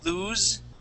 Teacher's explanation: when you pronounce that Z you can feel the vibration here in your throat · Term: voiced